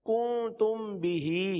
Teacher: میم ساکن کے بعد حرف با آ جائے تو میم ساکن میں اخفاء شفوی ہوگا، یعنی غنہ کریں گے